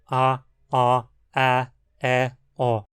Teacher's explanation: essa nasalização ocorre principalmente com vogais abertas, como a, ó, a, e, ó, e não com vogais mais fechadas